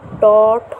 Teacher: এগুলো উচ্চারণের সময় কি হয় না, আমাদের যে জিহার শিখর প্রতিবেষ্টন করে, অর্থাৎ দেখো ট, ঠ উচ্চারণ করে জিহার শিখর কিন্তু প্রতিবেষ্টিত হচ্ছে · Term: মূর্ধন্য ব্যঞ্জন